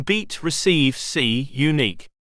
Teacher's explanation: Hollow right pointing triangle I, as in beat, receive, see, unique. As it is a long vowel, it almost sounds like a diphthong, but it does not actually glide into another vowel sound. The lips are only slightly spread. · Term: Long vowels